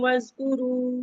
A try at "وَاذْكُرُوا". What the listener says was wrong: تھوڑا سے زال کا مخرج سیٹی لگ رہا ہے جب